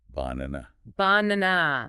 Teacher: that emphasis on the second syllable just makes it sound natural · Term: stress